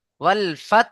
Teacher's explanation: শেষে হা উচ্চারণ আসবে হালকা